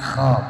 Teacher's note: Qiradatan kho bukan ko, jangan jadi ko, qiradatan qasiin itu jadi ko itu ya, kho dingorokin, kalau nggak bisa ngorok minimal jadi ha